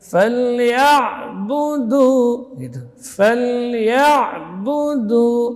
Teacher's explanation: Ya ain keluar di tengah tenggorokan, huruf tawassut baina syiddah wal rakhawah. Di sini huruf ya tidak boleh cenderung ke ain, tetap jelas.